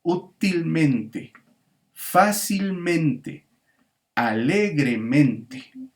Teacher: vas a ver que hay como una especie de dos sílabas tónicas